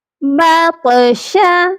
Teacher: طا پر قلقلہ کرنا ہے کیونکہ طا حرف قلقلہ ہے اور طا ساکن ہے